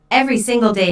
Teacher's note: notice that each word here is stressed the speaker wants to make a point so she emphasizes each word equally